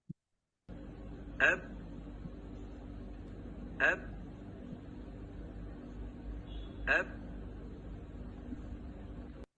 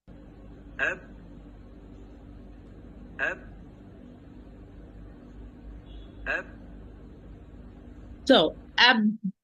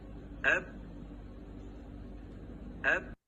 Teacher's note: So the articulation point is closed, and the sound was blocked behind the articulation point because it was closed. And then I open it suddenly with a degree of force to allow the sound, which was blocked behind, to go out with a degree of force which will cause qalqala to be happen.